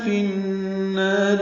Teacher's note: فی النار میں فا کو نون سے ملائیں گے، ادغام شمسی ہے جس کی وجہ سے الف لام نہیں پڑھا جا رہا اور یہاں پہ غنہ ہوگا، نا الف مدہ ہے اور را باریک ہے.